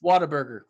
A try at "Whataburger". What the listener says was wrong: There's a T in there.